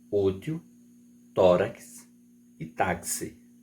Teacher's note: paroxítonas a sílaba tônica é a penúltima